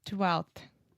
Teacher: So the F in 12th, we don't pronounce at all.